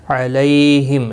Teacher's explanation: لی یا لین ہے، تھوڑا نرمی کے ساتھ کھینچ کر ادا کریں گے۔ میم ساکن ہی رہے گا وقف کی صورت میں۔